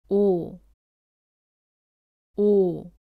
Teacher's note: 오를 발음할 때는 입술을 앞으로 내밀며 둥글게 만들고 소리를 냅니다.